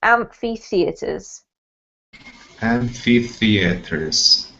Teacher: two sort of separate emphasis points on this word there's amp in amphi and fee in theaters